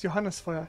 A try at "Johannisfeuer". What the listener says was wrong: Nein. Johannis. Mit nee, I. Hat dem E und S. N.